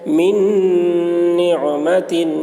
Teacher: اس لیے میم کو نون سے ملا کر غنہ کے ساتھ پڑھیں گے، اس کو ادغام ناقص کہتے ہیں۔